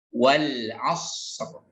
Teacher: maka shad lebih lama daripada ro